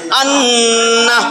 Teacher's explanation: এটা কেমনে হইলো হামজা নুন জবর আন নুন জবর না আন্না গুন্না এক আলিফ পরিমাণ ধইরা রাইখা ছাড়বেন আন্না তাহলে 17 নম্বর মাখরাজ নাকের বাঁশি হইতে গুনগুন আওয়াজে উচ্চারিত